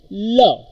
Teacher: Lateral sound produced by the air escaping from the mouth and sides of the tongue.